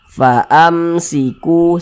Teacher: Misalnya ada huruf mim sukun, setelahnya huruf ta, huruf ya, huruf lam gitu, semuanya itu namanya izhar syafawi, terkecuali huruf ba dan huruf mim begitu. Ini izhar syafawi dibaca izhar ya, dibaca jelas, tidak berdengung, baca pendek saja.